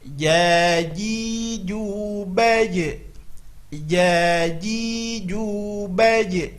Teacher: makhrajnya adalah tengah lidah ke tengah-tengah langit atas. Kebiasaan kita ujung lidah ke langit-langit atas, salah. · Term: huruf jim